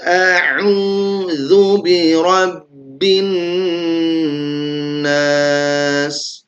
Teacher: qof ini dia punya sifat isti'ala yaitu ditebalkan